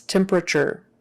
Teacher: that t is typically pronounced like a ch